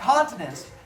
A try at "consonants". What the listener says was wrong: You said continent. Consonant.